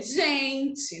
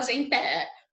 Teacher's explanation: A gente coloca força no gen, porque senão seria genté.